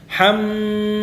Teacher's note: Pada mim tasydid, mim yang berharokat tasydid ini dia dibaca dengan gunnah, mim gunnah musyaddadah.